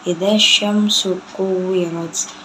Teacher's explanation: Itu alif lam syamsiyah karena alif lam bertemu dengan huruf shin. Cara bacanya, alif lamnya tidak dibaca dan langsung dimasukkan ke dalam shin.